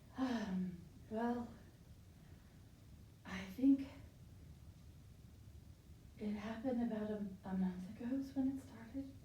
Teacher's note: i can hear your voice is breathy